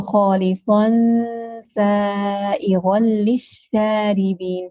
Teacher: You're starting with the sad. And then the gunna of ikhfa will be at the makhraj of sin, which will be with tarqiq, because sin is a letter of tarqiq